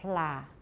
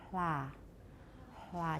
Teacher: The one they give us is the fricative, and that sounds like la. You can hear the friction.